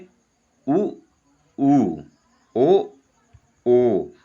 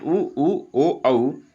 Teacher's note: तो हमारे होठों की आकृति वृत्ताकार बन जाती है एक वृत्त के समान बन जाती है। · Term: वृत्तमुखी